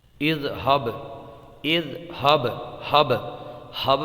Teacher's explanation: با میں آپ دیکھیے، با کی مثال آپ نوٹ کیجئے، جیسے اذہب، اذہب، ہب، ہب میں جو با کی آواز آ رہی ہے یہ قلقلے کی وجہ سے آواز پلٹتی ہوئی آئی ہے، اور یہاں پر با میں قلقلہ ہوگا اس لیے کہ با ساکن ہے، اس کے اوپر جزم ہے۔